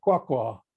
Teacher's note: to express an extremely different distant location with 5/5 tone on both syllables